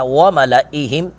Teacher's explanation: لام کو لمبا نہیں کریں گے